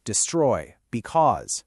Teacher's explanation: an unstressed syllable followed by a stressed one, da-dum. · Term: Iamb